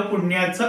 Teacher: म्हणजे त्याचा पू जरी ह्रस्व असला तरी णचा जोर आल्यामुळे, त्या णचा जोर आल्यामुळे तो पू जो आहे तो दीर्घ होतो, म्हणजे गुरु होतो. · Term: ण वर जोर